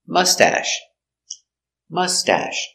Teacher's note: put the accent on the first syllable